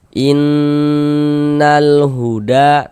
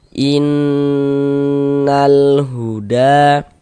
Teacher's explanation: Kita gunnahkan itu kita dengungkan. Jadi di bagian nah suara itu kita tahan, kita panjangkan sejenak. Kira-kira sepanjang 2 harokat. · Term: gunnah musyaddadah